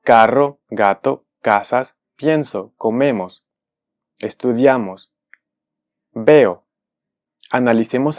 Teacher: todas esas palabras que mencioné son graves es decir tienen la sílaba tónica en la penúltima sílaba